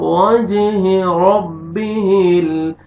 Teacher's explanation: جیم قلقلہ double sound آئے گا